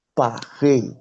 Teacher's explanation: You can see that P, A, R, I, S, but the S is not hard, is silent. So we say Paris.